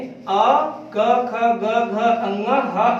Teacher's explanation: अा क ख ग घ ङ और विसर्ग कंठ से निकलता है